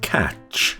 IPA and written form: kætʃ (catch)